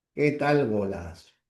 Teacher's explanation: Luego tenemos a la tercera clase de tono descendente que aparece con las oraciones conocidas como exclamativas